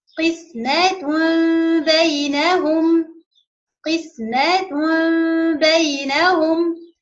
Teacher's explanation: We will change the Tanween to be meme with a Gunnah, because after it is ba.